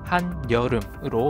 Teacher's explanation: 한여름의 한과 여 사이에 니은이 첨가되어 한여름으로 발음되죠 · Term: 니은 첨가